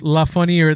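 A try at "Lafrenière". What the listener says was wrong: Lafreniere. La Funny? No, because there's an R before the A.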